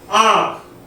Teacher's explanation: चंद्र बिंदु लगे वर्णों के उच्चारण में वायु नाक और मुंह दोनों से बाहर निकलती है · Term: अनुनासिक